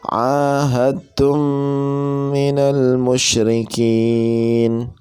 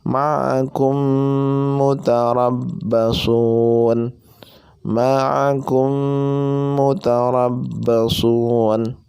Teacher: mim sukun atau mim mati bertemu dengan huruf mim, tum minal musyrikin, dengan suara gunnah sekitar 3 ketukan atau 3 harokat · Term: idgham mimi